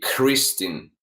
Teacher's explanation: I hear that you would put an H between the KR · if you say the K or T or another consonant, it seems to us, or I hear it like you combine it with H. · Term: the H sound